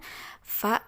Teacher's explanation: Nah, kalau untuk fa itu dua bibir, melibatkan dua bibir namun agak ke dalam dan sudah melibatkan gigi bagian atas seperti itu.